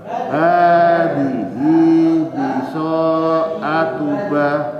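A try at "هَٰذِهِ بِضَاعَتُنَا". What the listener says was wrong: Kalau ba titiknya di bawah. Kemudian itu bukan biso. Kalau so tidak ada titiknya.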